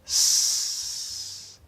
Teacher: So there's a lot of force, lots of good air. There's a whistle sound because of the position. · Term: S sound